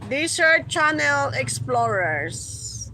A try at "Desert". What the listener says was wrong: Isa raman ka S. Isa raman ka S.